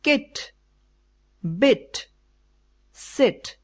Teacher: it is the short sound vowel and unrounded or the quadricep the position of the tongue is front and the mouth is nearly closed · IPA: /kɪt/ /bɪt/ /sɪt/